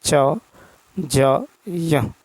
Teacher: जिन वर्णों के उच्चारण में श्वास अर्थात प्राण वायु की मात्रा कम हो उन्हें अल्पप्राण ध्वनि कहते हैं